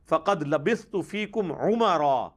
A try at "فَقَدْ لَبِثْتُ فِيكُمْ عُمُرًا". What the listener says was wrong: لفظ ہے عمرا، میم پر پیش لیکن مرزے نے میم پر زبر پڑھی لیکن عین کے تلفظ پر مرزے نے فل توجہ دی ہے۔